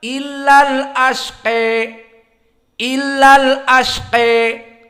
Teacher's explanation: Adapun Al-Kisai maka sama tahqiq al-hamzah, hamzahnya dibaca, namun ujungnya al-imalah al-kubra. Maka dibaca illal asqi, illal asqi.